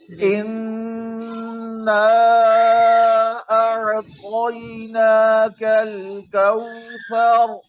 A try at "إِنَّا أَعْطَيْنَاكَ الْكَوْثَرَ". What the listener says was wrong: कलकला हो गया